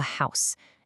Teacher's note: In house, that H is forcefully pronounced. It's a hard consonant sound